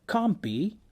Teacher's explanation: Sometimes elision comes together with assimilation, as in can't be, where due to the elision of the final consonant in can't, the now final alveolar nasal becomes bilabial under the regressive influence of b